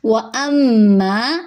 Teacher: میم پہ تشدید کی وجہ سے غنہ کریں گے، آواز کو ناک میں چھپائیں گے اور ایک الف کے برابر لمبا کریں گے